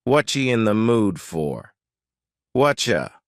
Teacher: the word you has been reduced to cha